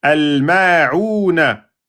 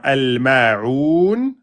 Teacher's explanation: Al-ma'ouna, à l'arrêt devient al-ma'oun. Le noun prend soukoun, précédé par une prolongation, 2, 4, 6 temps. Al-mad al-aridu li soukoun.